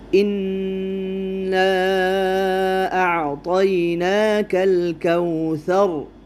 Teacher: انا کا جو الف ہے اس کو 4 الف کے مقدار اس کو کھینچ کے پڑھیں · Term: مد جائز منفصل